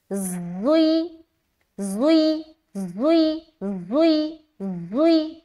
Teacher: सफ़ीरिया इसलिए क्योंकि इसमें सीटी नुमा आवाज़ जाहिर होती है और सफ़ीर के माना है सीटी, और असलिया इसलिए क्योंकि असला के माना है ज़बान की नोक, और ये वो ज़बान की नोक से अदा होते हैं